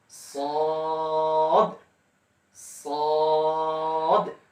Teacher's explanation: এরপর সদ, সদটা ওই রয়ের মধ্যে একটু মোটা হবে, কিন্তু লাস্টে একটু কলকলার হরফের কারণে একটু প্রতিধ্বনি সৃষ্টি করতে হবে, অর্থাৎ সদ, সদ একটু করে ধাক্কা দিবেন, অর্থাৎ প্রতিধ্বনি সৃষ্টি করবেন দালের উপরে।